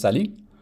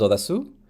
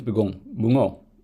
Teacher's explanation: All of these happen to be stressed on the final syllable